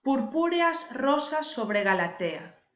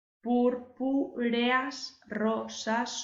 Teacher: aquí tenemos dos vocales que forman un yato fijaos que son dos vocales abiertas la e y la a y en cambio cuando contamos van en la misma sílaba